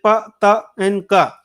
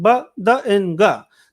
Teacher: Pa, ta, and ka are voiceless, and ba, da, and ga are voiced sounds.